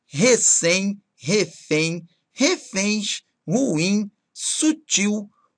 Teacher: repare então que a sílaba tônica tem que ser a última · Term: oxítona